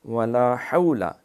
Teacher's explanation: یہ لمبا نہیں کرنا، ولا حول، لام زبر لا بس